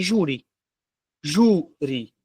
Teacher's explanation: A sílaba tônica não é a última, então não é oxítona. Ela é a penúltima. Se ela é a penúltima, a palavra é uma paroxítona.